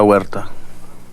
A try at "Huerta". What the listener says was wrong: No, not Huerta. H in Spanish is like a W.